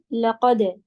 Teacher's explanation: और दाल पे कलकला आएगा